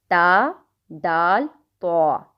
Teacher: زبان کی نوک اور ثنایا علیہ کی جو جڑ ہے اس سے 3 حروف